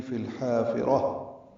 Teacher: لام ساکن پہ اظہار قمری، حا الف مدہ وسط حلق سے ادا ہوگا، را پر پڑھیں گے اور تاء مربوطہ پہ وقف ہو جائے گا، ہا میں تبدیل ہو جائے گی